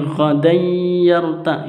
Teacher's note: Ini ghadan yarta', itu idgham bi gunnah, tanwin bertemu dengan ya, dibaca idgham bi gunnah, dibacanya dengung